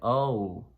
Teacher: when we say O, it sounds like we're saying O-U. So the mouth position changes. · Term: English O